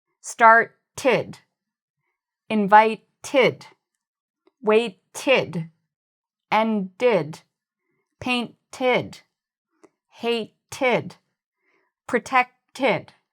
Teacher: If we have a t sound or a d sound before the ed, we pronounce it like id. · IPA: /ɪd/